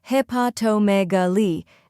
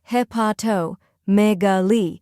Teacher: Third part, megaly, stress the me and end with a soft li